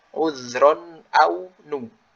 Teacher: setelah tanwin dia ada hamzah, lalu bibirnya mencucu.